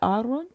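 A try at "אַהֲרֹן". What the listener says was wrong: It's Aha Ron. Aharon. And the accent's on the Ron, like Aharon. Correct. Not silent.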